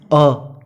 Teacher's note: जैसे पहले उच्चारण करते हैं अ को उच्चारण करते समय जिह्वा के बीच का जो भाग है वो सक्रिय होता है, इसलिए अ मध्य स्वर है।